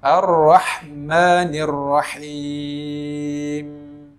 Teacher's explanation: maka ketika membaca ar-rahman digetarkan lidahnya dengan getaran yang tidak berlebih-lebihan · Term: menggetarkan lidah